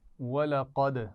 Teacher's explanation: وَلَقَدْ یہ قلقلہ ہے دال پر